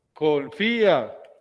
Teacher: El acento recae en la sílaba de la vocal débil. Al lado hay una vocal abierta. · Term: hiato